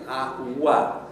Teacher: W is made with the back of the tongue and simultaneously with your lips round it. So we call that a labial velar consonant.